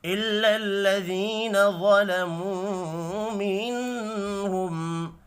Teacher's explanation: الا الذین ظلموا منہم، یا مدہ کو ایک الف کے برابر کھینچ کر پڑھیں گے، واو پر پڑھا جائے گا، واو مدہ کو بھی ایک الف کے برابر کھینچ کر پڑھنا ہے، نون ساکن کے بعد ہا ہے، اظہار حلقی ہوگا، غنہ نہیں ہوگا